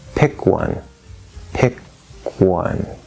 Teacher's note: there you're releasing the k into the w pick one and it's a very soft or weak k